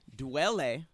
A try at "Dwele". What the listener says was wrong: You just said Dwele. You added an extra syllable.